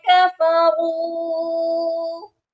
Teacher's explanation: را کے ساتھ واؤ مدہ ہے، اس کو بھی ایک الف کے برابر لمبا کریں گے اور را کو موٹا بھی کریں گے